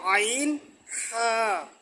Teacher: 1 নম্বর মাকরাস হলকের শুরু হইতে উচ্চারিত হয় হামজা হা। 2 নম্বর মাকরাস হলকের মধ্যখান হইতে আইন হা। 3 নম্বর মাকরাস হলকের শেষ ভাগ হইতে গইন খ।